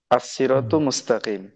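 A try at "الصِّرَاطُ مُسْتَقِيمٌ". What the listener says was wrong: মুস্তাকিমুন শেষে তানবিনটা উল্লেখ করতে হবে। আস-সিরাতু মুস্তাকিমুন,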